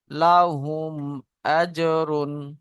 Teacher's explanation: মিম সাকিনকে বিনা গুণনায় জাহির করে পড়তে হবে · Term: ইজহারে সাফাবি